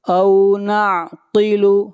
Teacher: قاف حروف مستعلیہ میں سے ہے، قاف کو موٹا پڑھیں گے